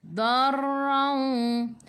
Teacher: Okey, tak keluar. Okey, kena ada getaran sikit. Sebab apa? Ra tu takrir.